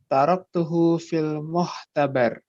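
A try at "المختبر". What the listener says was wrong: Fil mukhtabar. Kha ya.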